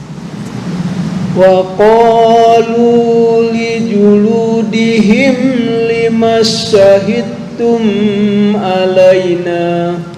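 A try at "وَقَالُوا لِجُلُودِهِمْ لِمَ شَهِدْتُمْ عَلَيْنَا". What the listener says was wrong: Dengung apa enggak? Tum alaina ketambahan dengung. Ini idhar. Tum alaina. Ini yang disebut dengan idhar syafawi. Apa idhar syafawi? Mim mati bertemu dengan selain ba dan mim di awal-awal.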